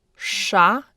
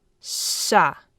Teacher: It's actually pronounced a little bit longer in length, and instead of your tongue tip being curled back, it's actually all bunched up towards the front of your mouth, towards your teeth.